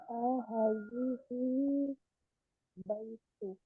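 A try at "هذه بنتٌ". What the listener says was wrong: Bukan bait, tapi bin.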